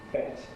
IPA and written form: bet (bet)